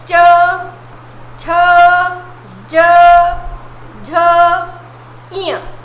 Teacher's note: अब है च वर्ग। च वर्ग का हम उच्चारण तालु से करते हैं। जो हमारी जिह्वा होती है ये तालु से क्या होती है? टच होती है।